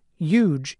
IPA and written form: judʒ (huge)